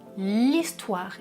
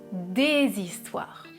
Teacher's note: Il y a une élision. Et au pluriel, je fais la liaison. Je dis des histoires. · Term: H muet